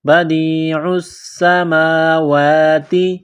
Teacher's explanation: بدیع السماوات، دال کو یا کے ساتھ پلس کرنا ہے، عین کو سین کے ساتھ ملانا ہے، پلس کرنا ہے، سین میں سیٹی کی آواز پیدا کرنی ہے، بدیع السماوات، میم کے اوپر کڑا زبر ہے، ایک الف کے لمٹ میں کھینچنا ہے